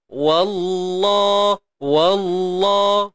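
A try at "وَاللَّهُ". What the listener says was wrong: Kalimah Allah tebal. Wa jangan tebal. Wa. Wallah. Tak nak. Kita nak wa. Wa.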